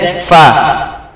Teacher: এরপরে ফা, ফা হচ্ছে এক আলিফ টান, ফা দুই ঠোঁট মিশবে, ফা আর অল্প ফাঁক থাকবে, মাঝখান ফাঁক থাকবে, দুই ঠোঁট মিশে ফা, মাঝখান ফাঁক, হাওয়া বেরোবে